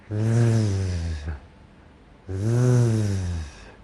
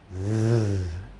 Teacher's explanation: My tongue is going to be up very close to the roof of my mouth. But instead of using just the air in my mouth, this time it's going to come from my throat. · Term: Z sound